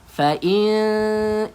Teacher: nun kosong bertemu dengan huruf ta, maka bacaan dia kena dengung. Renggangkan sedikit bibir kita.